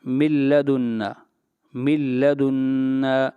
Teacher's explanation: یہاں پر نون ساکن کے بعد لام آیا، یہاں پر ادغام تو کریں گے لیکن بغیر غنہ کے کریں گے، غنہ نہیں کریں گے۔ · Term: ادغام بلا غنہ